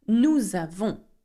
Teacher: I do the liaison here because avons begins with a vowel